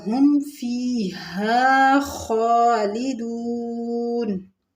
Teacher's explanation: یعنی ہم آواز ناک میں بند نہیں کریں گے، میں ہاں نہیں پڑھیں گے۔ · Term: اظہار